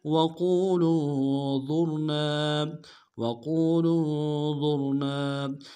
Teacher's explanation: لام کو نون کے ساتھ ملانا ہے، نون ساکن غنہ کریں گے